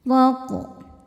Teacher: Huruf ra dibaca secara tafkhim karena berharokat fathah. Maka dibacanya tebal.